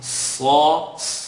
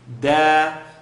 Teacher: So Sad is heavy, second part of the tongue. Sa, dal, tip of the tongue behind the top two teeth.